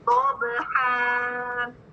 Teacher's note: جب بھی ہم فتحتین کی تنوین کے اوپر وقف کریں, ٹھیک ہے, دیکھیں نا, ضبحن ہے ورڈ, تو وقف کی صورت میں جو فتحتین کی تنوین ہے اس کو الف مد سے ہم بدل دیں گے. ٹھیک ہے, اور اس کو 2 کاؤنٹس دے کے پڑھیں گے, ضبحا, اس طرح.